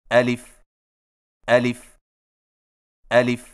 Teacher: الف کی ادائیگی میں آ کو بغیر کھینچے لی کو فا کے ساتھ فوراً ملائیں